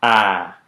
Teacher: made with the oral cavity open and the tongue toward the front